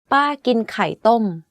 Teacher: It's ป ้ า ก ิ น ไ ข ่ ต ้ ม My aunt eats boiled eggs. The first and the last word of this sentence are in falling tone.